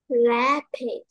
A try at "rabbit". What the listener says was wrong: Cái này âm không phải âm bật hơi, thế đâm ra con sẽ không được bật mạnh hơi đâu. Rabbit.